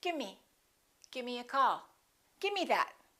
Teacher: With give me, sometimes you will hear people say gimme. Instead of the V, they just drop the V. Gimme. Give me a call.